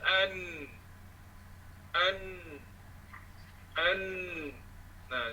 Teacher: Hujung lidah bertentangan dengan gusi dua gigi kacip tengah, iaitu bawah sedikit daripada makhraj lam, keluar daripadanya huruf nun. Artinya sama dengan lam juga, cuma nun ni dia agak ke belakang sikit, bawah sikit dia katakan.